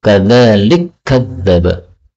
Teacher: Ini kaf ketemu kaf, boleh idgham menjadi kadzalik kadzdzaba